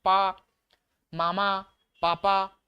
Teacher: पापा बोलते हैं तो हमारे जो केवल ओठ से आवाज आ रही है ओष्ठ व्यंजन है